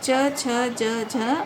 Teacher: स्पर्श संघर्षी यानी जो स्पर्श करते हुए भी लेकिन संघर्ष के साथ या ऊष्मा को बाहर तेजी से निकालते हुए मुख से निकलते हैं। इन व्यंजनों के उच्चारण में जिह्वा के अग्रभाग और तालु के मध्य स्पर्श और संघर्ष होता है